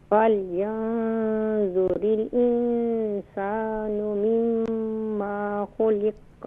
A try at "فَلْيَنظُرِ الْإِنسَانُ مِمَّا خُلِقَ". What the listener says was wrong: ہاں، مما نہیں ہے، دیکھیں میم کے بعد سیکنڈ میم کے بعد الف نہیں ہے، یہاں پر شارٹ ساؤنڈ کریں گے